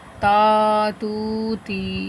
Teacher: الف مدہ، واو مدہ، یا مدہ، اور اسی وجہ سے ان کو لمبا کر کے پڑھیں گے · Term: حروف مدہ